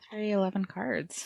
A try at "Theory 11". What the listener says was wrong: Theory 11, not 311. All I'm hearing is 311.